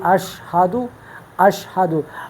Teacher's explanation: شین اس میں آواز جو ہے آپ کی منہ کے اندر پھیلتی ہے